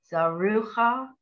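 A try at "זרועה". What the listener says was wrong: Not cha. This is an ayin. We don't hear it. We just hear the vowel. No, not cha. You don't hear a ch. It's you'll just hear that vowel.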